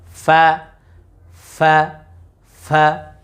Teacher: ফা, বলি ফা, ফা, ফা, এই যে দাঁত আছে না, দাঁতের আগা, এই যে ঠোঁট রয়েছে, ঠোঁটের ভিজা অংশে লাগিয়ে আমরা উচ্চারণটা করবো